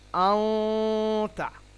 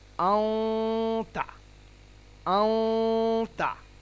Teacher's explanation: নুনটাই হবে একটু অস্পষ্ট নুন হবে, এটাকে বলা হয় ইকফা। · এই যে এই বর্ণগুলির মধ্যে থেকে কোনো একটি বর্ণ যদি আসে, তাহলে তানভিন এবং নুন সাকিনকে এক আলিফ গুন্না করে নাকের মধ্যে নিয়ে গিয়ে এক আলিফ গুন্না করে ইকফা সহকারে পড়তে হবে। মানে নাকের মধ্যে লুকিয়ে এক আলিফ গুন্না করে পড়তে হবে।